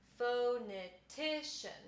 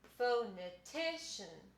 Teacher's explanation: So I would say pho is the secondary stress.